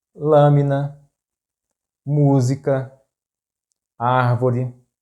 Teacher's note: For example: caro, ideia, fácil and the last group is "proparoxítonas": words in which the stressed syllable is the antepenultimate or the third to last.